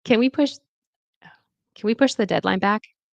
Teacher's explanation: the stress is push, push, and then dead in deadline, dead, back, back. And the rising tone is seeking agreement. Okay, so it's going to rise.